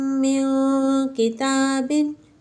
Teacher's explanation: وَلَكُمْ مَا كَسَبْتُمْ آتَيْتُكُمْ مِنْ كِتَابٍ، ہم نے میم ساکن کے بعد دوسری میم آئی، یہاں پر بھی غنہ کیا، اور نون ساکن کے بعد حرف اخفا میں سے کاف آ گیا تو یہاں پر بھی غنہ کیا